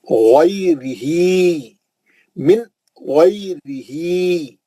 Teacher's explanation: غی میں لین ہے، را پتلا پڑیں گے